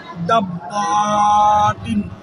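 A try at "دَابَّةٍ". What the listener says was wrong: دال کو کھینچیں گے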